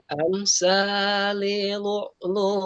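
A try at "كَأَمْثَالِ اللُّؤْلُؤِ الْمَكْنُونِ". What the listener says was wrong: Ka'amsalil masuk ke lam. Ka'amsalil lu'lu'il. Lu'lu'il pendek, nggak ada panjang. Ka'amsalil lu'lu'il. Lu'lu'il segera.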